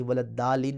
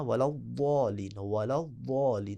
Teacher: آپ دال کی خوشبو دے سکتے ہیں، دال بنانا نہیں ہے۔ یعنی ولدالین نہیں پڑھنا، ولضالین، ولضالین۔